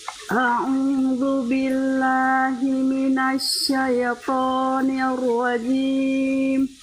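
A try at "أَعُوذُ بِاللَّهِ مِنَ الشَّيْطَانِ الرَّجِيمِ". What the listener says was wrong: Ayo huruf sya-nya, huruf sya. Syaitan. Ayo, syai.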